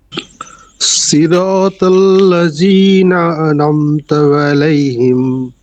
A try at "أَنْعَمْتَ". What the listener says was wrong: আনামতা, এটা মানে দ্রুত, বেশি দ্রুত হয়ে গেছে, আনামতা মনে হয় যে নুনে জবর দিছেন, আরেকটু, আন আমতা, ঠিক আছে, আমতা, হ্যাঁ, আল বলেন নাকি লাম বলেন নাকি, লাম হবে নাকি, নুন, আন আমতা, সরে আন, আন,